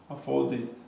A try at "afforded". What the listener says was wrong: Okay, you're getting them right, but your pronunciation is still not perfect. I need more D.